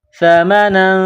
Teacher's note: سا زبان کا سرہ تھوڑا سا باہر نکالیں گے، سا کو نرم کریں گے، سا زبر سا، میم زبر ما، سما، نون دو زبر نن، سمن، تنوین کے بعد قاف ہے، حروف اخفا ہے، تو یہاں آواز ناک میں چھپائیں گے اور اس ناک میں آواز چھپانے کو اخفا کہتے ہیں۔